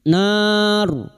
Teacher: Adzaban nar, nar bertemunya mad dengan huruf hidup yang dibaca waqaf mad arid li sukun 4 harokat kita panjangkan. Dan huruf ro yang didahului fathah dan dibaca waqaf maka ro kita baca tafkim